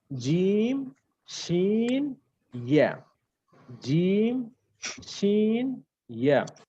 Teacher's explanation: 6 নম্বর মাখরাজ আমরা কি বলেছি, যে জিহ্বার মধ্যখান তার বরাবর উপরে তালুর সাথে লাগিয়ে জিম শিন ইয়া